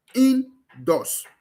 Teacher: The primary stress is found on both syllables.